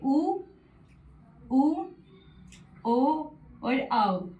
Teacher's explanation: आपके होठों की आकृति कैसी रहेगी? वृत्त के समान गोल रहेगी। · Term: वृत्ताकार स्वर